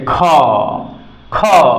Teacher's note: ख ख क अ ह मिला देते हैं तो ख होता है क और ह मिला देते हैं तो ख होता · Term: महाप्राण